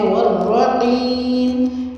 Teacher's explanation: والرقیم میں آپ نے واو پہ ہونٹوں کو راؤنڈ کرنا ہے، را پہ زبر ہے تو را کو آپ نے پوری یعنی کہ موٹا پڑھنا ہے۔